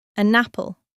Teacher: The N at the end of an links to the A at the beginning of apple. And it sounds like an apple. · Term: linking